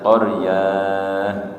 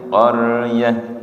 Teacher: Ketika waqaf dibaca ha kemudian dibaca pendek. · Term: ta marbutah